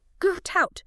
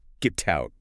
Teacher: The t sound at the end of get connects smoothly to the sound at the start of out. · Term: linking